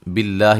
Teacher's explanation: لفظ اللہ کو باریک پڑھنا ہے، اس سے پہلے زیر ہے